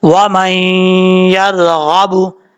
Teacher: بو، وَمَن يَرْغَبُ، یہاں پہ ادغام جر ملون ہو رہا ہے، ایک الف کی مقدار غنہ کر کے پڑھیں گے